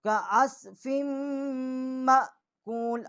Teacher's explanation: یہ اس کو چھوٹا کاف ہے، اس کو منہ کے درمیان سے پڑھیں گے